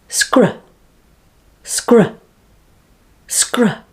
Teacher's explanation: Now put the s and k together and say sk, sk. Now just after the sk sound, get the third consonant r ready and release straight into it